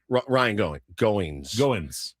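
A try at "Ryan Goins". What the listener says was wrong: Goings. There's no G. It's not going. No, it's going. Goings. Goings. Goings. Ryan Goings. Goings.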